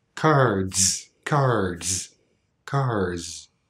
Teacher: almost hear that D sound another example cars cards cars cards the second one has a little bit more friction it's a little less smooth